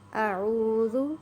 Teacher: عین کو آپ نے حلق سے ادا کرنا ہے اور زال کو نرمی سے ادا کرنا ہے۔